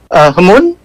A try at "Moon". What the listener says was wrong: Yeah, H is silent someone, but it's fine.